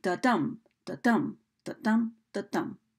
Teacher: You might notice that one of those beats is just a little bit stronger than the other, similar to the beat of a heart, where you've got one unaccented syllable and an accented syllable in each set of beats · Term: iambic meter